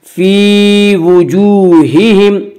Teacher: واو مدہ وہ واو جو ساکن ہو اس سے پہلے پیش ہو، واو مدہ کو 1 الف کے برابر کھینچ کر پڑھیں گے